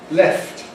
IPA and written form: left (left)